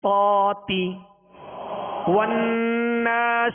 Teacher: والناشطات، والناشطات، طا کے اوپر کھڑا زبر ہے، آواز اور منہ کھولیں گے، طاتی، والناشطات، ہونٹوں کو گول کر کے اسے پر نہیں کریں گے بلکہ جڑ زبان اوپر اٹھائیں گے تو خود بخود یہ حرف پر ہوگا